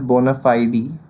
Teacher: we can also pronounce it as bona fide with focus on fide